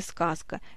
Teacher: перед глухим к произносим звук с хотя пишем букву з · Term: оглушение звонкого согласного звука